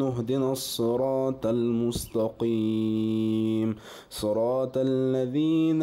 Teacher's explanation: الصاد كادت كسرتها ان تكون فتحه وكذلك الطاء قلبت الطاء تاء في الموضعين